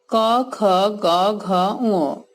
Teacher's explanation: এগুলো ধ্বনি হিসেবে কণ্ঠধ্বনি, কারণ এগুলো উচ্চারণ হচ্ছে আমাদের কণ্ঠ দিয়ে